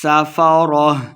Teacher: سین پہ سیٹی کی آواز آئے گی